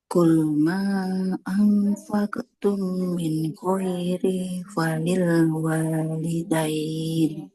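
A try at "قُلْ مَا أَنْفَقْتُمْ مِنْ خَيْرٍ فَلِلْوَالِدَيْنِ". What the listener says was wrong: Ikhfa-nya ada yang kelewat Ibu. Kemudian ini ya, qalqalah qafnya qul ma anfaqtum karena qafnya tebal. Nah, qalqalahnya ikut tebal. Ma anfaqtum min khairin falil walidain.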